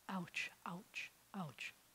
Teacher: It's actually a glottal stop, which means your throat closes and opens. So if you were to say the word, ouch, if at the beginning of the word, ouch, you'll notice that your throat closes and opens before you get to, let's say, the O.